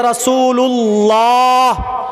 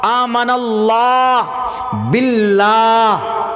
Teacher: پیش ہو تو پر، جیسے رسول اللہ، اللہ، آمن اللہ باللہ، دونوں اللہ ہے لیکن ایک اللہ پر ہے، ایک اللہ باریک ہے